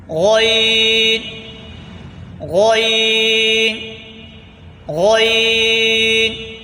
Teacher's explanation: حلق کے اوپر والے حصے سے ادا ہوتا ہے